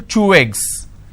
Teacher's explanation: one ending with vowel sound, another one starting with a vowel sound, you can combine or link these 2 sounds together. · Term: linking